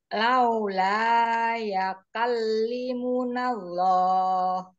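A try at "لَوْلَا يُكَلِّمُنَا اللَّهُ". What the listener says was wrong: Bukan yakal tapi yu. Yukallimunallah. Kemudian bacaan lin wawu jangan lau tapi lau. Jadi wawunya itu bunyinya vokal u. Jangan w. Lau gitu ya. Lau. Nah, jangan lau, lau. Nah, kalau lau jadi seperti W ya, lau.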